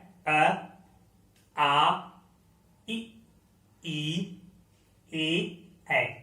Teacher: जब हम अपना होठ जो है बोलते समय गोला न बनाए तो वो जो होते हैं अवृत्त मुखी